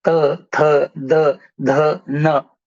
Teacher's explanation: इसको दंत कहते हैं। त वर्ग का उच्चारण करते हुए आपकी जी्हा ऊपर के दांतों के पीछे लगती है।